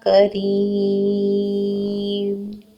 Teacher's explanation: کاف کے اوپر ایک حرکت ہے، اس کو لمبا نہیں کریں گے، فوراً پڑھیں گے. را زیر یا ری ہے، باریک پڑھیں گے را کو اور 2 حرکت لمبا کریں گے. وقف کی صورت میں 6 حرکت تک دول دینا افضل ہے.